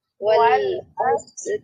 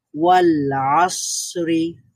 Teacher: লাম বলার সময় ল সাউন্ডটা আমাদের আংশিক ছিল, আর স সাউন্ডটা আমাদের একটু দীর্ঘায়িত হয়েছে, জারি ছিল।